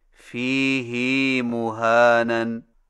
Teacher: Number 9، فیہ مہانن میں فیہ کی ہا کو کچھ کھینچ کر پڑھیں، یعنی اس طرح فیہ مہانن۔